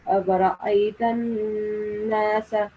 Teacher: We have to prolong the Noon Mushaddad sound for a couple of seconds. Like we have to stop a little bit at the Noon sound, Noon nasal, when we're creating the nasal sound